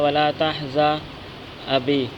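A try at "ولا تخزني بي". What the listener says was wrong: ولا تحزى ابھی نہیں، بھی، ابھی نہیں، بھی.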